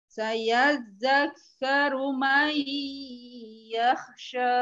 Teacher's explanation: nun sukun ketemu ya may idgham bi gunnah jadi disertai dengung